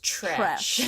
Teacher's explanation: I can't say it without a ch sound